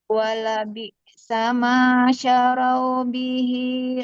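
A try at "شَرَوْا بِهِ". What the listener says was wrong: Syarau, jangan syarau ya. Syarau. PR panjang pendek ya. Nah, untuk panjang pendek dulu fokus untuk panjang pendek. Untuk huruf tebalnya dia memang catatan juga ya, karena belum tebal. Tapi nggak apa-apa, fokus dulu ke panjang pendek.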